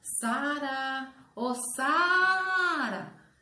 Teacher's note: a sílaba mais forte da palavra Sara é sa